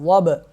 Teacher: واد کو موٹا پڑھیں گے اور با پہ کریں گے قلقلہ، واد با زبر وب۔